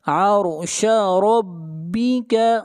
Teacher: را کے اوپر زبر ہے، را کو موٹا پڑھیں گے